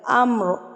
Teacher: را پر پڑا جائے گا جب ہم اس پہ وقف کریں گے کیونکہ اس سے پہلے زبر ہے